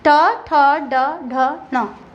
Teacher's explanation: इसमें हमारे यहाँ पर तालु से ऊपर से हवा निकलती है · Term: मूर्धन्य व्यंजन